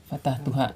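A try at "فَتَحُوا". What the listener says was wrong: Ada tambahan wawunya di belakang.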